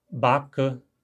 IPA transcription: bakə